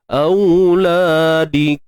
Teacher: Untuk mim yang sukun tuan-puan, dan dia bertemu dengan huruf lam, maka kat sini kita kena jelaskan. IZS lah, izhar syafawi.